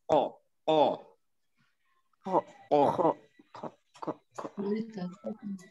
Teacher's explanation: Dia salah satu juga huruf isti'la yang kalau kita ucapkan lidah bagian belakangnya naik. Jadi enggak perlu dimonyongkan, enggak o, tapi o, o.